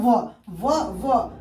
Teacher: जब व पढ़ते ना तो आपका दांत जो है ना ऊपर वाले होठ में सट जाता है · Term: दंतोष्ठ